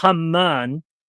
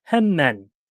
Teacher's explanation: The Arabic phonetics are Haman. The Egyptian is a soft H. It's Hemen.